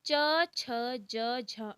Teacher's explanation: चवर्ग का उच्चारण स्थान तालु होता है